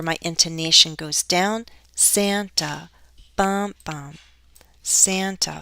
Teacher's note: final content word this is where my intonation goes down